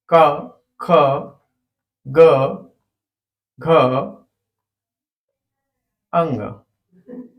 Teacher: वर्ग क ख ग घ अंग ये क वर्ग होता है कंठ से होता है गले से बोला जाता है